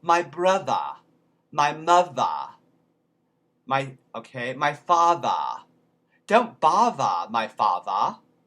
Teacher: that uses the voice box these um or in the middle a lot of times in the middle of words you'll have th like brother the mother father weather and all of those get replaced in cockney with a b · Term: voiced th